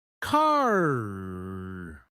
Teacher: American English is what we call rotic meaning the r sound is emphasized even at the end of words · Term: rhotic